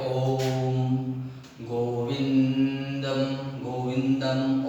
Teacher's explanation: ओम की ध्वनि वो प्लुत होता है